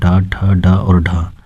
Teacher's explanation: ट ठ ड तथा ढ ये मूर्धन्य व्यंजन के अंतर्गत आते हैं